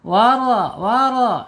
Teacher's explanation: Bacaannya ada penyempitan di kerongkongan ya kalau tebal.